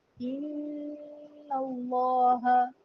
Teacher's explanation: جب نون پر غنہ کریں گے تو زبان اوپر والے تالو کے ساتھ لگے گی۔ جو زبان کا نوک ہے، زبان کی نوک اوپر تالو سے لگے گی۔